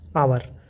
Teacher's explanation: बस ये है कहीं कहीं ये क्या होता है, साइलेंट होता है, एच लगा रहेगा लेकिन इसको हम उच्चारण नहीं कर दें, जैसे कि आवर, एच लगा है लेकिन इसको हावर नहीं पढ़ेंगे, इसको क्या पढ़ेंगे, आवर।